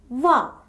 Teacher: the lower lip touches the upper front teeth, and in that position, air is let out through the sides without any friction.